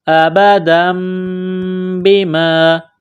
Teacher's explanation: تنوین کے بعد با ہے، یہاں پر غنہ کریں گے، آواز ناک میں چھپائیں گے، اس ناک میں آواز چھپانے کو اقلاب کہتے ہیں